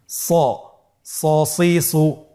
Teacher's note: এখানেও আমাদের একটা জিনিস খেয়াল রাখতে হবে, হরফটি যেহেতু মোটা অক্ষর, এই হরফটি সা বলা যাবে না, স বলতে হবে, একটু মোটা করে বলতে হবে